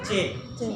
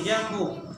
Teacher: kalau di Arabnya huruf jim tengah lidah bertemu dengan langit-langit yang ada di atasnya.